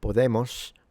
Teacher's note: We know that the S at the end of words would have been a sh, which is in between an s and a sh. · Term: retracted S